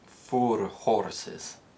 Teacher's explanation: where the OR sound exists in received pronunciation, it's replaced with a short O or a more closed O sound, depending on the word